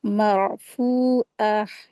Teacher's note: वाव मदिया का rule apply करेंगे। फ़ा के साथ वाव मदिया हो रहा है, दो हरकत खींचेंगे।